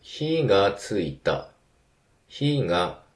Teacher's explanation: ファイヤーの方だと、火がついた。火が、だから、高低になって